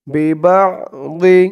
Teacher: আইনের উচ্চারণটা গলার ভিতর থেকে শক্ত হয়ে বের হবে